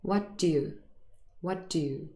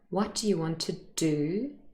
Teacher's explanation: It's an incredibly short little d sound, but the second one, what do you want to do, is stressed in its full form. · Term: weak forms